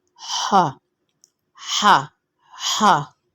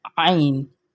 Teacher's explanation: ہا بہت سختی سے ادا ہوتا ہے، عین اسی کے ضد میں نرمی سے ادا ہوتا ہے۔ ہا ہا ہا آواز میں سختی ہے، ہا، اور عین آواز میں بالکل نرمی ہے، عین بالکل پیاری سی آواز میں ادا ہوگا، عین عین نرمی سے، عین۔